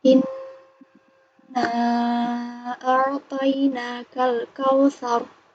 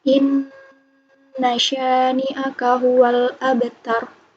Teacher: Cara membacanya, nun ditekan dengan kuat dan ditahan selama 3 harokat. Pokoknya kunci dari gunah itu adalah 3 harokat. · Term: nun yang bertasydid